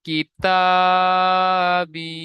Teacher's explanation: ইয়া সাকিনের ডান দিকে জের এসেছে, ইয়া মাদ্দা হবে। ইয়া মাদ্দাহকে এক আলিফ পরিমাণ টান দিয়ে পড়তে হবে।